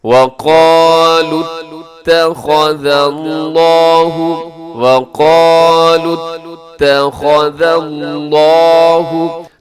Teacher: لفظ اللہ آپ نے موٹا پڑھنا ہے، لفظ اللہ سے پہلے ذال کے اوپر زبر ہے، اسے آپ نے خوب موٹا پڑھنا ہے۔ · جب ہم اس کو آگے ملائیں گے لام کو تا کے ساتھ تو پھر واو نہیں پڑھی جائے گی۔ وَقَالُوا اتَّخَذَ اللَّهُ، اب یہاں بہت احتیاط کے ساتھ اپنے پڑھنا ہے کیونکہ اس میں تا باریک پڑھا جائے گا اور خا موٹا ہوگا، پھر آگے ذال باریک ہے، پھر لفظ اللہ موٹا پڑھا جائے گا۔